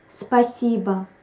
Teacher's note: Note that we pronounce something between O and A at the end.